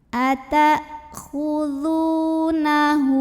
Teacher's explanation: Maka hak domirnya yang sudah berbaris dhammah terbalik ini kita panjangkan 2 harokat saja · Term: mad silah qasiroh